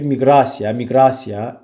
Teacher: Burda vurğusu birinci hecadadır. Bax, miqrasiya sözündə vurğu A-ya düşür